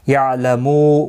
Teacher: وہم، میم ساکن کے بعد یا آیا ہے، یہاں پر بھی اظہار شفوی ہوگا، جس طرح سے یہاں پر اظہار شفوی ہوگا، میم ساکن کو ظاہر کر کے پڑھیں گے۔ یعلمو، مو واو مدہ ہے، ایک الف کی مقدار کے برابر کھینچ کر پڑھیں گے، اور وقف کی صورت میں نون ساکن پڑھا جائے گا، وقف بالاسکان ہوگا، مد العارض وقفی ہوگا، 3 سے 5 الف کی مقدار کے برابر کھینچ کر وقف کریں گے۔